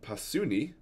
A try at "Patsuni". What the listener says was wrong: Patsuni. Or Patsuni. It's like a TS sound.